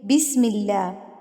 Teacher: میم کے نیچے زیر ہے تو اللہ لفظ جو ہے وہ باریک پڑھا جائے گا